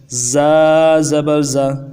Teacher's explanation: زا زبر زا، اس کو ذال بالکل نہیں بڑھائیں گے، زبان کو دانتوں کے سرے کے ساتھ نہیں لگائیں گے، دونوں دانتوں کو ملا کے پھر زور دیں گے۔ زا زبر زا، تھوڑی سی آواز آئے زا کی۔ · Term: سیٹی والا حرف